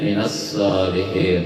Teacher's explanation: Ada cirinya, ada tasdid di atas huruf shad, jadi langsung lamnya tidak dibaca, langsung huruf shad. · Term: alif lam syamsiyah